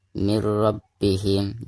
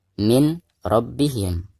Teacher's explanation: tetapi dimasukkan nun sukunnya ke huruf ro-nya ya